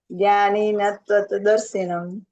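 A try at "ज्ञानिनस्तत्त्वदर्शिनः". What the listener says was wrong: दर्शिनम नहीं माता जी, दर्शिनः। हाँ देखिए, एक बार मैं आपको दिखाती हूँ। ज्ञानी नस है ना, एक सेकेंड। ये देखिए नीचे ना, ये ज्ञानी नस तत्वदर्शिनः, ज्ञानी नस, वो स आधा है तो ज्ञानी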